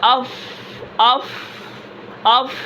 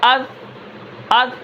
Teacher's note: حمزہ ہا زبر اح، اح، آواز کے اندر پستی ہے لیکن سانس جاری ہے، سانس بند نہیں ہوا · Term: ہمز